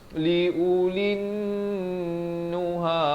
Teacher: Dan di sini bila lam baris kasrah naik terus di atas nun di sini alif lam syamsiah, kena dengung 2 harakat, wajibul gunnah di sini.